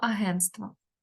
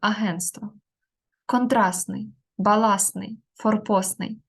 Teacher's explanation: в іншомовних словах які закінчуються на СТ оця Т випадає